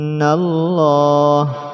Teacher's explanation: inallah ada tasdid harus didengungkan